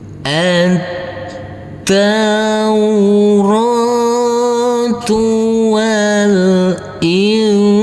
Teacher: Jadi pas waktu kita berdengung persiapan masuk ke huruf jim. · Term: ikhfa